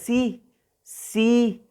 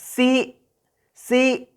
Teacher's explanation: ¿Eso qué quiere decir? Que vamos a hacer un poquito de fuerza, como que un tope de sonido al final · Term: glotalizada